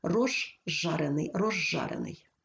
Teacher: свистячий за ним іде шиплячий Але у вимові свистячий з уподібнюється до ж шиплячого і ми вимовляємо ж подовжений